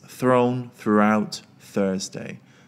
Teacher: three words are the most challenging that is thrown throughout Thursday you've got that uh combination of three unvoiced th words all together